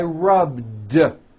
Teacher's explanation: all I did was add a voiced D sound at the end rub do it's not rubbed with an unvoiced T it's rubbed